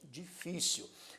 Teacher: tônico ocorre na penúltima sílaba e neste caso acentuada graficamente difícil o acento tônico acento prosódico ocorre na penúltima sílaba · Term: paroxítona